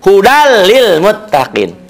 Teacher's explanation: hudallilmuttaqin di idghomkan dimasukkan seakan-akan bunyi hilang berubah menjadi hudal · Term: idgham bilagunnah